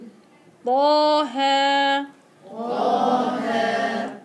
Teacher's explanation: طا مفخمة مع حركتين، ها مرققة مع حركتين